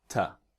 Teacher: So very soft on the T, the t, not ch, but ta, like that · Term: weak pronunciation